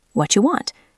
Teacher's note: Sometimes native speakers reduce it even further to just watcha.